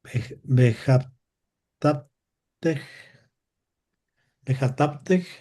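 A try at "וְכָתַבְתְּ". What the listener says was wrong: No, sin leerlo Sheba. Solamente lees las consonantes. Vejataft. Vejataft.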